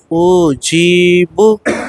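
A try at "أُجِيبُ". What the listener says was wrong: او کو نہیں کھینچیں گے. او اوجی اوجیب اوجیب. او پہ رکے مت بیٹے. اوجی اوجی اوجیب. اوجی اوجی. او پہ اگر آپ رکیں گے حمزہ پیش او کے ساؤنڈ پہ اگر زور دینا شروع کرو گے تو کھینچ دیں گے آپ.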